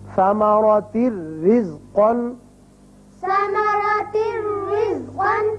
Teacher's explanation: اسی طرح را تنوین کی وجہ سے ایک زیر پڑی جائے گی اور صرف را ہوگا، یہاں نون کی آواز نہیں آئے گی